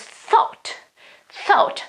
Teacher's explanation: the strong th with a lot of air, okay, pushed out, and then a very open vowel